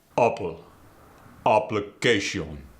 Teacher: the A sound, as in apple, gets the short and staccato sound